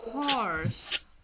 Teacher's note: bunu uzun o kimi tələffüz eləyəcəm